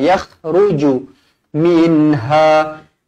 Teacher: huruf kha pastikan ada getaran di kerongkong